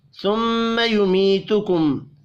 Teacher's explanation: میم مشدد پر غنہ کریں گے